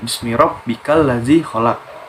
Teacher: Jadi setelah habis huruf kaf, alifnya itu tidak dibaca dan langsung dileburkan ke huruf syamsiah tadi, yaitu lam. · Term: alif lam syamsiah